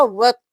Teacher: ہم واو کو طا کے ساتھ ملائیں گے اور طا موٹا پڑھیں گے ، واو زبر طا وط، طا زبر یا طی، وط طی،